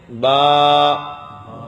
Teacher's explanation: با جو ہے دونوں ہونٹوں کے تر حصے سے ادا ہوتا ہے